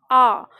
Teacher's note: जैसे हम बोलते हैं आ, अब आप आ का उच्चारण करो तो कहाँ आपको लगता है? कंठ के पास लगता है, पिछले हिस्से पे।